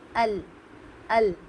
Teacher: जब आप अल कहेंगी तो याद रखिए उस वक्त लाम को बारीक पढ़ा जाएगा · اور جب آپ ال کہیں گی تو یاد رکھیے اس وقت لام کو باریک پڑھا جائے گا